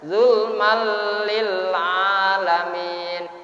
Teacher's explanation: walaupun dibaca idgham tapi tidak boleh dibaca didengungkan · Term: idgham bila guna